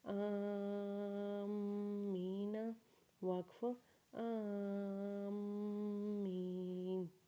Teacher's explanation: حمزہ کو میم کے ساتھ ملاتے ہوئے حمزہ کے اوپر مد اور کھڑا زبر پڑھیں گے اور میم کے اوپر غنہ کریں گے کیونکہ جب میم مشدد ہو جاتا ہے تو میم کے اوپر غنہ کرتے ہیں